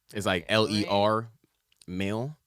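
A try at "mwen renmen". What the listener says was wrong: No, it's R. The R. Yes, it's RENMEN. Mwen. Yeah, mwen. Mwen. Mwen.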